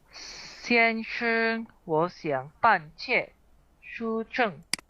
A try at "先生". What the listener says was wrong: Oke, itu bukan 先生. Betul, shengnya nada satu, tetapi kalau sudah jadi kata 先生, shengnya itu qing sheng atau tidak ada nadanya atau nadanya netral. 先生, 先生, bapak, tuan, mister.